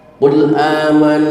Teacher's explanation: jangan sampai mengqalqalahkan huruf lam sehingga terdengar bacaan kule a. Jangan pakai le kena lam bukan huruf walqalah.